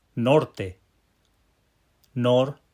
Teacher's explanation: those two syllables with the pow syllable on the nor